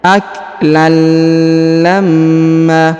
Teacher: huruf tanwin an bertemu dengan lam bertasdid, maka tanwinnya menghilang, melebur ke huruf lam yang bertasdid